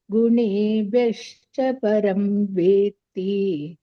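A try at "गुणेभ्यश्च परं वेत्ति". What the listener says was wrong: ಮಹಾಪ್ರಾಣಗಳನ್ನ ನೋಡಿ ಮಾತಾಜಿ ಒಂದು ಕಡೆ ಚೆನ್ನಾಗಿ ಹೇಳಿದರಿ ಮಹಾಪ್ರಾಣ ಒಂದು ಕಡೆ ಮಹಾಪ್ರಾಣ ಬಿಟ್ರಿ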